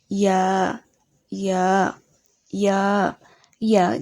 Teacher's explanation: ইয়া, ইয়া, ইয়া, ইয়া জিহ্বার মাঝ হতে নরম ভাবে বলতে হবে।